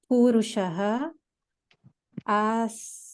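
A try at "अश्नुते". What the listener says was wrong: It is not sita, dental sa. It is sha, palatal sha. So ashnute.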